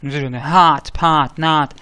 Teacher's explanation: Но так как у нас нету тут никаких буковок И, у нас всего три буковки, здесь, здесь, здесь, то в основном эта буковка читается А. Легкий выдыхающий звук, быстренький А. Иногда американцы особенно, они настолько выдыхают, что она в них похожа прям на А.